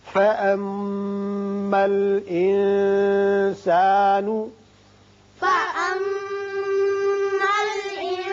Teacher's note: میم مشدد ہے، غنہ کریں گے اور نون پر اخفا ہوگا